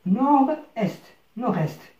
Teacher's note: هناك كلمة تنتهي بحرف الR زائد T وR وT. La liaison se fait avec le R. معنى أن عندما نربط هذه الكلمات التي تنتهي بحرف RD و RT يكون الربط هناك مع الحرف R.